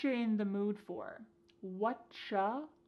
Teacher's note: Here the word you has been reduced to cha.